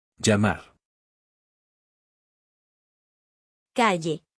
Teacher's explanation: In Mexico, both of these are pronounced the same way, as a sound similar to the English Y in the word yes. Both spellings produce the same sound.